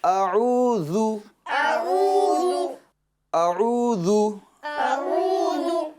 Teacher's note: یہ جو ذال ہے نا، اس کے اندر آپ کو زا کی آواز پیدا نہیں کرنی ہے